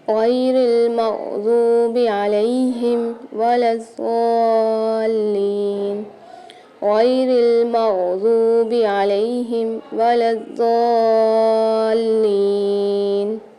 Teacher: غیری میں دیکھیے یا ساکن آ رہا ہے تو یہاں پر ہم ایک الف کی مقدار کھینچ کے پڑھیں گے